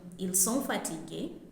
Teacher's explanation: A is a question using intonation where you declare a statement, ils sont fatigués, but then you raise your voice at the end to indicate that it is a question